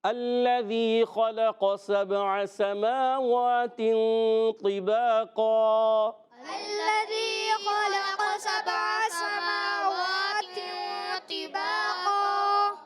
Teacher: تا کے بعد طا موٹا رکھنا ہے، زیر ہے مگر زیر کی حالت میں بھی طا موٹا ہوگا۔